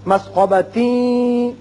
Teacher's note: چونکہ تا تنوین کے بعد یا آ رہا ہے ادغام غنے کے ساتھ کریں گے